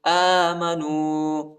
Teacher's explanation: حمزہ کے اوپر کڑا زبر آیا ہے، اس کو ایک الف کی مقدار تک کھینچیں گے۔